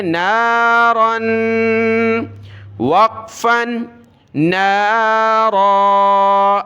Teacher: وقف کی صورت میں اس الف کو پڑھنا ہوتا ہے جب ہم رکتے ہیں ایسے لفظ پر جس کے آخر میں دو زبر ہو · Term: تنوین